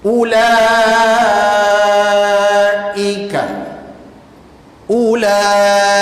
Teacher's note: Ni, waw ni tak boleh panjang pasal ada bulat ni. Disebabkan ada bulat tu tak boleh panjang, maka kita baca pendek saja.